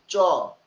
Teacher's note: চ বললে জিহ্বা তালুতে গিয়ে লাগতেছে, তাহলে এটার নাম হচ্ছে তালব্য বর্ণ বা তালু বর্ণ